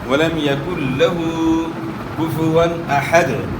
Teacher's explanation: لام کی زبر کو آپ نے نہیں کھینچنا ورنہ یہاں ایک الف کا اضافہ ہو جائے گا۔